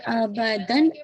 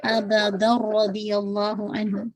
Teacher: تنوین کی آواز ساؤنڈ جو ہے مرج ہو جائے گی را کے اندر, ناٹ ابدن ابدا رضی اللہ عنہ. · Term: ادغام کامل